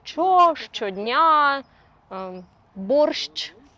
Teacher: There is like two sounds, sh, ch, but we express it with one letter, sh. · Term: affricate ща